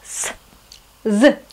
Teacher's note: Следующий звук у нас «с», «з». Он располагается у нас на верхних альвеолах.